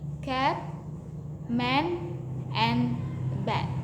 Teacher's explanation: And then E as in cat. This is a low front vowel. It is pronounced with the tongue positioned low and towards the front of the mouth. Examples include cat, man, and bat.